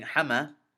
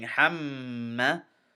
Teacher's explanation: Now in this case, this meme I'm holding in my nose a little bit. I'm not saying hama, I'm saying hamma, and that's called ghunna.